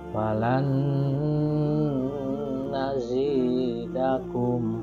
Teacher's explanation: Itu adalah contoh idgham bi gunnah atau idgham ma'al gunnah, memasukkan huruf dengan mendengung. Jadi huruf nunnya seolah-olah ada 2 dalam kalimat falan nazidakum. Kemudian dimasukkan huruf nunnya, nun 1 yang mati dengan huruf nun yang lain.